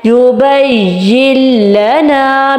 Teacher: نون کا کوئی بھی اثر ہماری زبان پہ باقی نہیں رہا · بالکل نون کو چھپا دیا ہے، نیکسٹ والے لام کے ساتھ جوائن کیا ہے اور کوئی ٹائم کوئی غنہ اور نیکسٹ والے لیٹر کے ساتھ بس داخل کیا اور نون کو بالکل اگنور کر دیا، ٹھیک ہے، نون کو بالکل ہم نے نہیں پڑھا۔ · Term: بلا غنہ